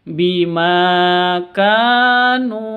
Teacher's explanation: ini panjang semua dua harakat Ma panjang ka panjang NU panjang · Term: panjang dua harakat